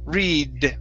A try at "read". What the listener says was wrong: Uh-huh, you're almost there. Instead of t, okay, you don't want your tongue to touch your teeth.